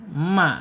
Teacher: Al-khaisum itu masuk ke rongga hidung ya, mim. Asyafatain itu dua bibir, kemudian yang satunya lagi al-khaisum masuk ke rongga hidung.